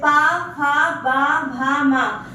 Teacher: जैसे पा, फा, बा, भा, मा, इन 5 व्यंजन को आप बोल के देखिएगा तो आपका दोनों ओठ स्पर्श करेगा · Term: ओष्ठ्य व्यंजन